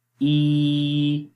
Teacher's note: इसी वजह से इस या को या मद्दा बोलते हैं, यानी मद्दा का मतलब लंबा करके पढ़ना। तो इसको एक अलिफ के बराबर लंबा करते हैं और इसका जो मखरज है वो जोफ़े दहन है